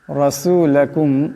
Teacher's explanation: রাসূলাকুম এখানে রার উপর জবর আছে, রাকে মোটা করিয়া পড়তে হবে।